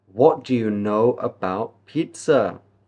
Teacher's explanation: it's a question so we can go up with our tone